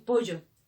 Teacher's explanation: Entonces suprimimos el sonido de la doble L.